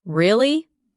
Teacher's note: when you ask a question like, Really? your voice goes up slightly at the end. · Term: rising tone